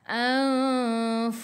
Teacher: Ingat fu gigi atas menyentuh perut bibir bawah. Dan sifat huruf fa ni dia ada angin hamas.